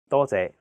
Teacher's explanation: the first character is in high flat tone first tone it means many and the second character is a low flat tone sixth tone